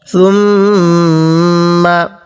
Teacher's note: মিমের উপর তাজিদ হলে এই মিমটিকে গুণনা করতে হয়